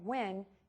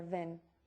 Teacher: The biggest mistake that I see with the W sound is the lips are bitten. And instead of hearing W, you'll hear V. So instead of hearing win, you would hear vin.